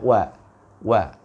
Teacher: Wan najmi, waw itu kalau kita sebutkan waw, ya, dia tanpa harus berbaris dhammah, maka waw tersebut sudah mencucukkan bibir kita, bibir atas dan bawah. Ya, wa. Karena seperti itu aslinya.